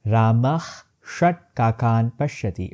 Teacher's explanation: Visarga is followed by retroflex sh, t, and t. The Visarga transforms into half sh.